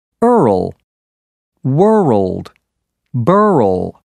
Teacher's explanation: for r l place a vowel sound between the r and the L